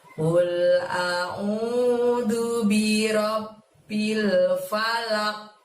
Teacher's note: Mantulnya seolah-olah ada bunyi huruf qaf berfathah. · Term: qalqalah kubro